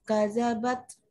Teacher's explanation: ditekan dalnya ya, ada tasydid. Jadi setiap ada yang bertasydid itu ditekan.